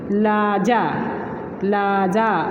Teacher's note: मागधी में जो र, ल तथा स को ख या स हो जाता है, जैसे राजा का लाजा। रो को क्या कहते हैं मागधी में, रो को ल, र को ल